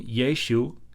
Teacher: it was yesu with a glottal stop at the end which is a sound that not a lot of languages have